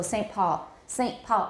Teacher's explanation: i may have a glottal stop saying saint but i don't have an n